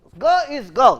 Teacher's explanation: Ga is whether it is English, Hindi, Bengali, the ga is voiced, unaspirated, plosive. So, if you see the voice, that means there will be a voicing during the occlusion.